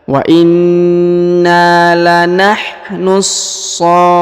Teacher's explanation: harus ditahan dan ditekan pada huruf fa ya, karena di sini terdapat tanda tasdid. Wa inna lanahnu saffun, huruf fu lalu dipanjangkan 2, 4 atau 6 harokat karena di depannya terdapat waw sukun ya, lalu huruf na yang di ujung disukunkan ya.